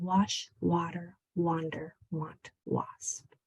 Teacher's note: A that follows a W often sounds like ah.